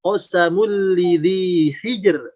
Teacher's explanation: jadi ada ro disukunkan, sebelumnya sukun, sebelumnya adalah kasroh. Maka di sini jadi tipis. Qasamul lidhi hijr, bukan hijr.